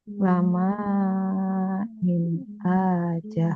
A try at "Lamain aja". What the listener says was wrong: Kecepatan. Ini Bu, pelan-pelan saja. Lamain aja.